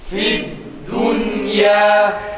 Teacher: dal harfinde de ü değil aksine u'ya yakın veya u sesinin çıkarılması gerektiği. Bazı insanlar da u sesi çıkarmaya çalışırken o sesini çıkarıyor.